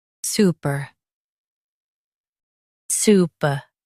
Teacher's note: Su, p, super. Stress su and keep per light.